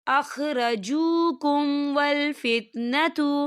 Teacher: دیکھیے اخرجوکم، یہاں میم ساکن ہے اور میم ساکن کے بعد واو آ رہا ہے، تو یہاں پہ اظہار شفوی ہو رہا ہے اور ہم اسے بنا غنّے کے پڑھیں گے